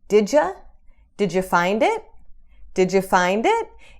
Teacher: A gente junta essas palavras. Did you vira did ya?